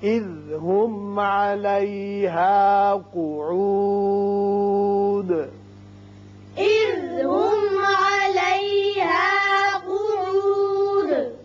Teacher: یہاں میم ساکن پر اظہار شفوی ہوگا